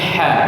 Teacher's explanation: Tidak ada getarannya, bukan kha ya. Bukan kha tapi ha bersih ya.